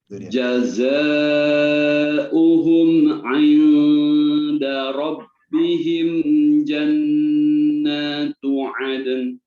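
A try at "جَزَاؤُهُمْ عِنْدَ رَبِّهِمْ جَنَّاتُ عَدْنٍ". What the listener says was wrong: Ahsan, barakallahu fiik.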